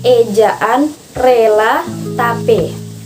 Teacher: Kemudian yang ketiga adalah fonem E, adalah vokal yang sedang, depan, bulat. Vokal ini dibentuk dengan daun lidah dinaikkan, tetapi agak lebih rendah daripada untuk vokal I. Vokal ini disertai dengan bentuk bibir netral, artinya tidak terlentang, tidak juga membudar.